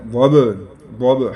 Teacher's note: با ہے اور یہ ساکن ہے اس پر قلقلہ ہوگا